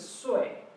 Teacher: So the tone goes down, the fourth tone.